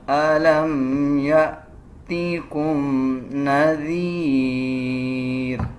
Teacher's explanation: ذال تب ادا کیا جائے گا جب زبان کی نوک دونوں دانتوں کے درمیان ہم لے کے آئیں گے